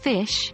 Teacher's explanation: F sound, as in fish, is voiceless. This means that your vocal cords don't vibrate when you say it.